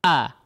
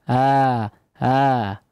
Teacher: kalau Hamzah a ada awalannya terdengar secara tegas ya suaranya itu terdengar secara tegas